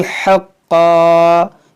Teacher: یہاں پر وقف کریں گے تو دو زبر کو الف سے بدلیں گے، حقا پڑھیں گے